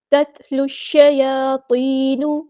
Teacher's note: لام کو ہم نے شین کے ساتھ ملا دینا ہے، حمزۃ الوصل ہمارا ڈراپ ہو جائے گا، اور لام یہاں پر لام شمس ہے، اس کو ظاہر نہیں کرنا